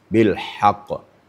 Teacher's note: tapi ha di tengah tenggorokan. Bilhaq, terasa di tengah-tengah tenggorokan. Di ha ini makhrajnya sama dengan ain.